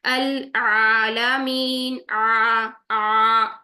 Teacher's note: आ ये हम कर रहे हैं टू काउंट्स यहाँ पर लंबा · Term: अलिफ मद्दा